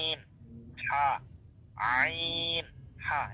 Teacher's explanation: হরফ দুইটা গলার মধ্যখান থেকে হচ্ছে তাই আপনাকে একটা এক্সট্রা প্রেসার ক্রিয়েট করতে হবে গলায়। যদি আপনি গলায় চাপ অথবা প্রেসারটা না দেন তাহলে আপনার এই হরফ দুইটার উচ্চারণ সহিহ শুদ্ধ হবে না।